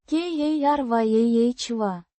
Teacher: Pronounced. ka-RYAH-vah. With the stress on the second syllable.